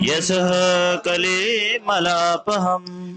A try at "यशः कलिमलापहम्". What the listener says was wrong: यशः कलिमलापहम्। मैं यशः पे एम्फसाइज कर रहा हूँ, कली पे एम्फसाइज कर रहे हैं, नहीं यश पे एम्फसाइज करना है। अब फिर सुनिए, यशः कलिमलापहम्, इस श्लोक का फोकस यश है, भगवान का यश, ठीक है, कली नहीं है।